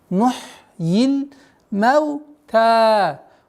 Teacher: Удлинение в размере 2 огласовок фатхи